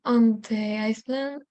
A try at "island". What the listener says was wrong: Island. The S is silent.